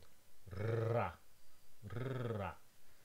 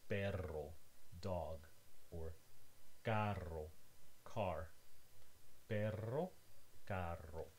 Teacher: Your tongue is touching the alveolar ridge repeatedly several times. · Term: trills